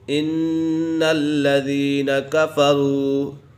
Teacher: نون مشدد ہے تو اسے غنہ کر کے پڑھیں گے